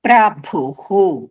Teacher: విసర్గ వచ్చినాయి కాబట్టి హు వస్తుంది